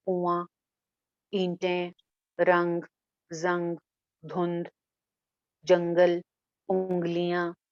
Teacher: मख्फी से निकला इख्फा यानी छुपा के पढ़ना, उसमें हम नून को थोड़ा सा छुपा के पढ़ते हैं, हाइड कर देते हैं नून को, जाहिर नहीं करते, ज्यादा शो नहीं होता नून।